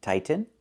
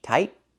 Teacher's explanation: The word is pronounced two different ways. You can say tighten and make a real T, tighten, or you can make a stop T, tight, and then go to the N, tighten, tightening.